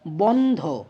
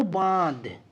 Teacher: নাসিক্য ব্যঞ্জনধ্বনি ক্ষীণ হতে হতে ক্রমশ লোপ পায় এবং তার রেশ স্বরূপ পূর্ববর্তী স্বরধ্বনিতে একটা অনুনাসিক অনুরণন যোগ হয়। যেমন ধরো বন্ধ, নাসিক্য ব্যঞ্জনধ্বনি ন লোপ পেল, দিয়ে কি হলো বাঁধ, অর্থাৎ একটা অনুনাসিক অনুরণন এখানে যোগ হলো, এটাকে বলা হচ্ছে নাসিক্যী ভবন, এই প্রক্রিয়াকে।